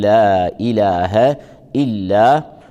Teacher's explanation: اللام هنا مرققة في إله، ترقق وترقق الألف بعدها